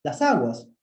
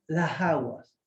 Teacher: Notice the last fricative, right? A form in which glottal fricative sound substitute the alveolar fricative, right, in the final position.